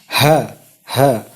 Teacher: ketika kita membaca ha itu kita menekan dari dalam di dada.